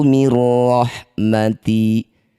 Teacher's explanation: masukkan bunyi nun pada ro bila ghunah tanpa mengalirkan suara melalui rongga hidung atau tanpa didengungkan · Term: idgham bila ghunah